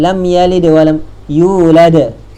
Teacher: maka bunyi pantulan qalqalahnya terus didatangkan dengan jelas dan kuat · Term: qolqolah kubro